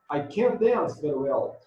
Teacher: basta você pôr stress, pôr força, pôr entonação mais forte que no can.